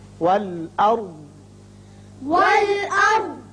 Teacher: را ہم پر پڑھیں گے اس لیے کہ اس کے پچھلے حرف پر زبر ہے.